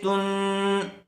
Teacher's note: غننے کے ساتھ اخفا ہوگا